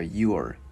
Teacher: Cái mình cong lưỡi chữ R vào